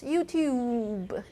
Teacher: Think about, read my lips, YouTube. They both have very strong labial feature, and it's contaminating my T, so it becomes YouPube.